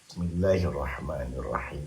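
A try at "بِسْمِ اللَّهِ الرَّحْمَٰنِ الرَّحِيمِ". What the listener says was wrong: Bukan. Nggak, terlalu pendek. Terlalu nggak ada nada tuh. Terlalu males tuh. Benar, tapi kan gitu pakai irama, pakai tilawah. Bismillahirrahmanirrahim.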